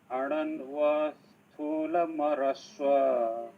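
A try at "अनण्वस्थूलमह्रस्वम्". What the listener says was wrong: अनण्व न पहिला अनण्वा अन अनण्वा अनण्वा स्थूलमह्रस्व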